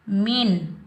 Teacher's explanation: نون پر ہم نہ غنہ کریں گے نہ اخفا کریں گے، نون کی آواز کو ہم ظاہر کر کے پڑھیں گے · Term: نون کا اظہار